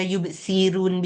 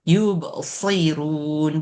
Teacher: Sod ni kena tebalkan, jangan yubsirun biasa, kena yubsirun.